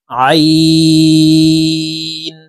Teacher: আইন হরফকে হালকের মধ্যখান থেকে চাপ দিয়ে উচ্চারণ করব কারণ আইনের মাখরাজ হালকের মধ্যখান থেকে হবে আমরা অনেকেই আইনের উচ্চারণ